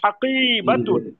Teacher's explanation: কফের পরে টান হবে, বার পরে টান হবে না।